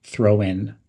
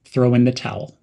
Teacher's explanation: in the towel this means to give up or quit something link throw and in almost as one word throw in and emphasize the word towel throw in the towel